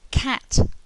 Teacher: Okay, this is a really big mouth to produce this sound. The lips are quite spread and the mouth is very widely open. The tongue is at the front of the mouth.